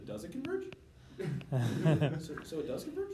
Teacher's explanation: And then when you ask questions, you're gonna do it in like a rising tone.